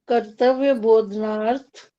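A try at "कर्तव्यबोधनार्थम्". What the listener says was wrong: अर्थम ऊपर बिंदी होगी, बोधनार्थम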